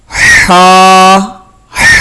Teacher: ہا ادا ہوتی ہے وسط حلق، یعنی حلق کے جو درمیانی حصہ ہے